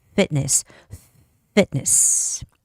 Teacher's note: Can you hear my front two big teeth blocking the air? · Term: F sound